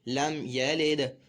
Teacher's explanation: تو یہاں پر دال میں بھی جو ہے قلقلہ خوب ظاہر کر کے پڑھا جائے گا